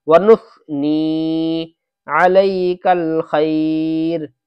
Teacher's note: ونس کا سین نہ آ جائے، ونس سا آنا چاہیے، زبان کو ہلکی سی اوپر کو نکال کے اور اوپر کے دانتوں پہ لگا کے